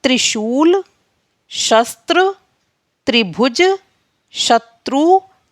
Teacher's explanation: त्र में हमारी ता की और रा की दोनों की आवाज आ रही है